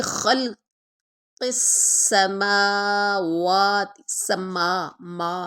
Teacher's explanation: ما ناک میں آواز نہیں لے کے جانی